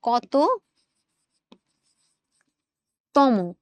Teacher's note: কতর পরেও আমি একটা ও উচ্চারণ করছি